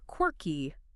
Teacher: And the stress is heavy on that first syllable.